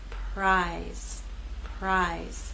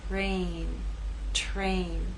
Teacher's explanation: R begins voiceless and takes on a voice sound as we move into A.